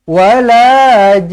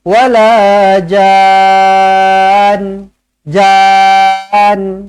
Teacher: kalaulah Nun ni tak ada sabdu baru boleh berhenti macam biasa a j macam tu tapi disebabkan ada sabdu kena dengungkan dua harakat · Panjang ja, kemudian nun ini ada tanda sabdu, bermakna kalau kita nak berhenti sekalipun, kita kena dengungkan nun tu baru kita berhenti. Dengungkan nun tu dua harakat baru berhenti.